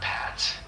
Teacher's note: you'll push a small burst of air out with your lips and you won't use your vocal cords. So it's more of a soft airy sound. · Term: P sound